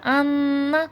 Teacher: نون پر تشدید ہے، نون مشدد کا غنہ ہے